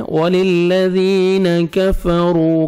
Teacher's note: را کو آپ نے 1 سیکنڈ کھینچنا ہے. را کو مرپیش ہے. را کو موٹا بھی کریں گے.